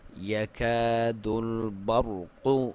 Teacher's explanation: یا کو باریک کلیئر، الف مدہ ہے، 1 الف کے برابر لمبائی